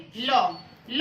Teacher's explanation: वायु जीभ के बगल या पार्श्व से गुजरती है इसलिए इसे पार्श्विक व्यंजन कहते हैं।